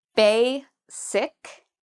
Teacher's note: Bay is the first part, and that's where the stress is. So we say bay louder and longer.